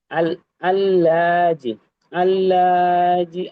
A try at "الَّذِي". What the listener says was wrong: এখানে আল্লাহ টান হয়ে গেছে, এটা আল্লাযী হবে।